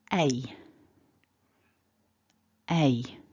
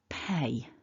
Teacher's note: there is a little bit of movement in the mouth as you make that sound because it contains two individual sounds that are working together you need a shift a movement of the mouth so if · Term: double vowel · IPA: /eɪ/